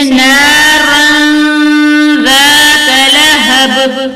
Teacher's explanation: دو زبر کی تنوین کی آواز کو چھپا کر پڑھیں گے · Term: اخفا